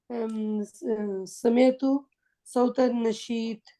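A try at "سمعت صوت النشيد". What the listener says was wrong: نشید ہے یار، نون رہ گیا اس میں.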